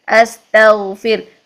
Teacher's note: سین کو دیکھیے تو آواز میں جو ہے وہ بیس بن رہی ہے سانس کی